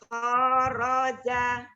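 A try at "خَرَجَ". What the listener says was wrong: Kharaja. Kho. Nah, dibuka. Jangan ditahan. Kho, jangan ditahan. Ya, dibuka turunkan rahang bawahnya. Kho. Kho. Ah, ya, lidah naik.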